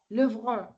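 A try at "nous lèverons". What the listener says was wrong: Est-ce que leverons? Est-ce qu'on dit nous leverons? Ou bien lèverons? Lèverons. Le fait de ne pas ajouter l'accent, c'est une faute.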